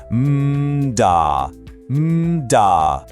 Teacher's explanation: The only difference is what we call the engine, your voice box. For D, the engine is on and you feel a buzz.